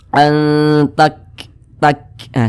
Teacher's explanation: cara mengucapkan huruf Kaf sukun itu ada nafas yang mengalir ketika Kita mengucapkannya an tak takah seperti itu tak ada napas yang mengalir seperti